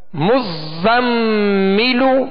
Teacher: مز، اب زا کو پڑھیں گے مزم مزم، آگے میم مشدد ہے تو کیا کریں گے؟ غنہ کریں گے · زا کو سختی میں پڑھیں گے، سیٹی کی آواز